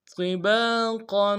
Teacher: قا کو موٹا ادا کریں گے، با کے ساتھ الف مدہ ہے، ایک الف دال میں کھینچیں گے، قوف کے اوپر تنوین ہے غنہ کریں گے، وقف کی صورت میں قوف کو الف سے بدلیں گے.